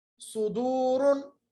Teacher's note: देखिए सीन की तरह पढ़ा जाएगा मगर मोटा यानी मोटी आवाज के साथ होंठों को गोल कीजिएगा